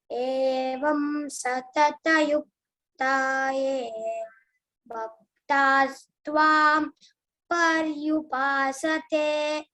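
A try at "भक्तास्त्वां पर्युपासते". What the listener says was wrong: Okay, Bha Mahaprana. Okay, next time you should give attention to that. BHA is there.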